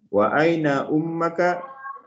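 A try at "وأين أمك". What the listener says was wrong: Diulang ya, ummuka laisa ummaka.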